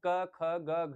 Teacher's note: क ख ग घ हम हमारे यहां कंठ सर उच्चारित होता है। यहां कंठ पर ज्यादा दबाव पड़ता है।